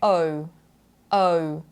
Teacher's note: there are two vowels that are sliding into the other very smoothly